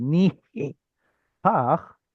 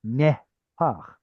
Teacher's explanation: So instead of ni pach, it's nehpach, and that way that eh sound is our cue that we have a guttural there, since we can't hear the sound of the letter hey